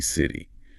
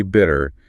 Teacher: The tongue just quickly, lightly taps or flaps against the roof of the mouth. That sharp T turns into a soft D.